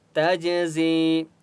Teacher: جیم کے پر سکون ہے، تا کو جیم کے ساتھ ملائیں گے